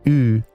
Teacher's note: The California U is pronounced more in the middle of the mouth, sounding like ooh.